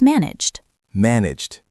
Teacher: It ends in a soft G sound, which is voiced.